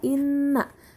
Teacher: Selanjutnya, pada kata inna terdapat nun ditasydid, hukum tajwidnya adalah gunnah, dibaca dengung dan ditahan 2 harokat.